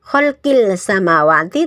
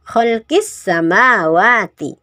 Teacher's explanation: Idgham syamsiyah. Idgham itu dimasukkan dari kholqi langsung masuk ke sinnya.